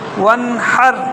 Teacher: یہ گلے کے شروع سے ہا کو ادا کریں گے